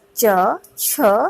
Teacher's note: जिन व्यंजनों के उच्चारण में कोई दो उच्चारण अवयव एक दूसरे को स्पर्श करके जब बोलने का प्रयत्न करे तो आंशिक रुकावट होती है, यानी वायु को निकलने में कुछ संघर्ष करना पड़ता है, तो उन्हें स्पर्श संघर्षी कहा जाता है।